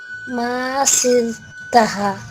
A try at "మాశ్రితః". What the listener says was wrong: షాతో పాటు రా పలకాలమ్మా. మాశ్రితః.